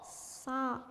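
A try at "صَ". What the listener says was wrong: Jangan kasih lewat hidung Nanti hidung pernah kita pelajari dulu namanya apa dulu Kak Habib yang keluar lewat hidung? Khaysum. Khaysum hurufnya ada 2 saja. Nun dan mim yang bertasdid. Dia ketika posisinya gunnah maka disebut dengan khaysum. Selain dari gunnah berarti tidak boleh dikhaysumkan. Tidak boleh keluar lewat hidung. Huruf itu tidak bisa keluar lewat hidung kecuali ada nun tasdid dengan mim yang bertasdid.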